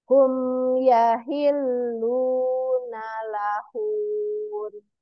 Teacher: Hum yahilluna lahun. Jadi hun, jadi hunnya singkat, tapi nunnya yang panjang ya.